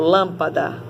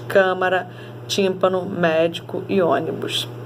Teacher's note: a antepenúltima sílaba acentuada é mais forte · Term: sílaba tônica